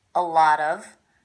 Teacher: the first thing I noticed is this T is a flap T it sounds like a D a lot of that's because it's coming between two vowel sounds